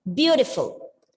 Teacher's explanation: Where is the stress given? On the first syllable.